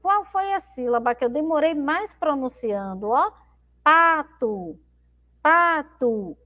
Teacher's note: Então eu demoro mais um pouquinho falando a sílaba pá, tá? É a sílaba mais forte da palavra pato.